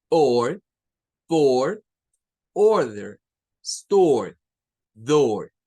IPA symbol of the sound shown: ɔː